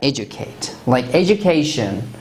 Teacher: if we use u after d it will have the sound of j